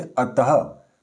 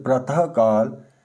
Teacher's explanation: विसर्ग का उच्चारण जो होता है इस तरह से आधे ह के रूप में यानी कि स्वर रहित ह के रूप में होता है। तो ये जिस स्वर के साथ विसर्ग लगते हैं उसी के अनुरूप इसका उच्चारण बदलता है।